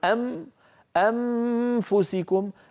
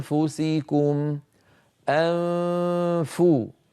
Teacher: فلينتبه الى هذا الامر اذا نعيد النطق الصحيح انفسكم انفو ان من مخرج الهمزه الى مخرج الفاء من غير ضغط ان فو فاذا انتهى صوت الغنه الممطوطه الكامله فو اضغط على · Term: اخفاء النون